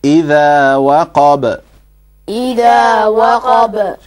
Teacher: So the two extra things you have to understand, that ba is also one of those letters that you pronounce with a light mouth, with an empty mouth, and that on ba there is qalqala, meaning that if the ba is sakin, then you have to bounce it